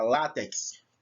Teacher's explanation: eu percebo a palavra látex, o lá é o mais forte. Então, a sílaba tônica de látex é a penúltima sílaba, e é terminada em x.